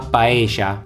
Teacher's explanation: en la zona rioplatense del Río de la Plata, por tanto la capital Buenos Aires, donde esta doble L se pronunciaría sh